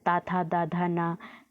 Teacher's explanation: और ता वर्ग दंत से बोला जाता है,